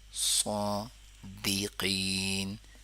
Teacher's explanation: صادی دی، صاد نہیں کریں گے، سادی بھی نہیں کریں گے، صادقین، صا کو پر کر لیں گے، دی کو نہیں پر کریں گے، قی قاف کو پر کر لیں گے